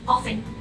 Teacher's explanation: The third word is often or often, which is both pronunciation are correct, but usually we use often without the T sound